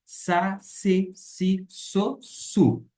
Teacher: Quer dizer, sigma no grego, mas que corresponde ao nosso S. O S no grego sempre vai ter um som fraco, sibilante